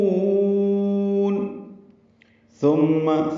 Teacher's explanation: ثم ثا نرمی سے پڑھیں گے اور میم مشدد پہ غنہ ہوگا